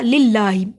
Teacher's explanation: اللہ کے نام سے پہلے زیر ہے، اللہ کے نام کو باریک پڑا